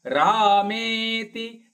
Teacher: ರಾ ಮತ್ತು ಮೇ ಎರಡು ದೀರ್ಘ ಪದ, ತಿ ರಸ್ವ.